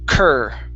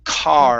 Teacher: you're going to open your mouth up with an ah, then move to the R sound.